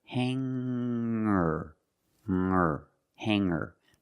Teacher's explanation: When I change these words with er, I don't pronounce the g sound. It's just the nasal linked together with the Together, hanger, hanger.